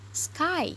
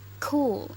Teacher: there is a little bit puff of air when we produce it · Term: aspirated allophone